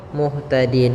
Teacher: maka nunnya menjadi sukun Muhtadin dan sebelumnya ada huruf mad maka panjangkan dulu d-nya sepanjang boleh dua harakat boleh empat harakat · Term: Mad Arid